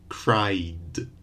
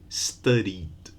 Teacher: It ends in a vowel. So in the past, you just add d, studied, without an extra vowel.